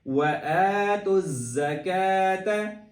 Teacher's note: زا پہ زور دیں گے کیونکہ اس پہ تشدید بھی ہے، اور زا کو ویسے بھی زور دے کے سیٹی کی آواز نکال کے پڑھتے ہیں